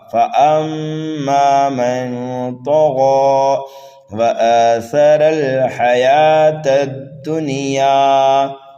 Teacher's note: سا کو نرمی کے ساتھ جلدی پڑھنا ہے، را کو پر کر کے پڑھنا ہے